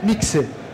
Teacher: é sempre KS nunca o som de x que a gente tá acostumado